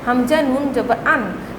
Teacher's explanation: the tip of the tongue and the palate right over it are used to pronounce the letter noon